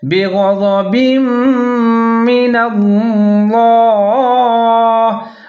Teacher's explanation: غین کو آپ نے موٹا کر کے پڑھنا ہے